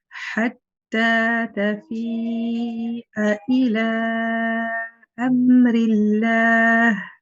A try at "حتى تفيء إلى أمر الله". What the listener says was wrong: Good. The ha can be a little bit lower.